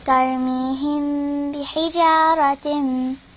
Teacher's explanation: So from the mim to the ba, you know the connection over there? It's called ikhfa shafawi because you have to put like a little bit of ghunna. So you have to go like tarmihim bihijaratin, like that, okay?